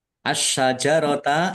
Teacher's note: Asyajarata alif lam syamsiyah karena tidak dibaca langsung masuk ke huruf berikutnya yaitu syin ditandai syinya ada tasdidnya. Sinnya dibaca dobel ditekan biar tampak dobelnya.